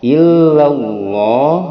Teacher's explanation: lafaz Allah sebelumnya fathah, dia dibaca o. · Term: tafhim